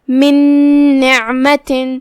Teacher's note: ہم یہ پہلے نون کو دوسرے نون میں داخل کر کے ایک ہی نون پڑھیں گے اور غنہ کے ساتھ اور تشدید کے ساتھ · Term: ادغام